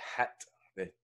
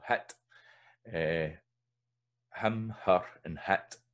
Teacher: In a lot of Scots, you've got hit. The H is preserved. So in older, way back in English and in history, there was an H there, I know, but it tends to only be preserved in Scots.